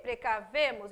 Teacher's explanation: sílaba tônica está lá no V